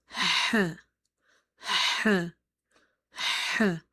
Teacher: we have letter ha, which is from the middle part of your throat. In order to say this letter ha, you have to make your mouth wide open and you have to exhale the air out.